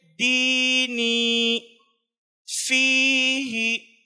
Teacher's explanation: یا مدہ کو ایک الف سے زیادہ 1.5-2 الف کے برابر کھینچ کر پڑھوانا ہے